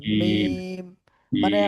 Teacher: দুই ঠোঁট দুই ঠোঁটের শুকনো জায়গা হতে উচ্চারিত হয় মিম। দুই ঠোঁটের, মিম।